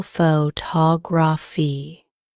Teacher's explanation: the stress is on the second syllable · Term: word stress